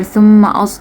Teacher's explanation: Thumma mim mushaddad, you have to do gunna here.